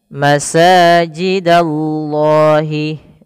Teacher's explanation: ada sin berharokat fathah bertemu dengan alif, maka di sini mad tabi'i panjangkan 2 harokat